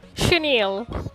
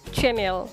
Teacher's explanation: We do not say this word as chenille. The syllable che will be pronounced here as sh, not as cha.